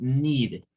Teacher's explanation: Bueno, tenemos need, que lo gesticularíamos con una I, con el sonido largo para la letra E del inglés